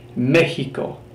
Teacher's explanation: the pronunciation is a lot like the letter J in that it's a hard H burst of air